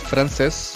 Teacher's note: francés está terminando en ese y el acento está en la última sílaba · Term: palabras agudas